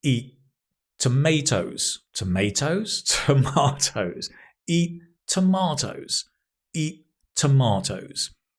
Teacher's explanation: It's just one T sound.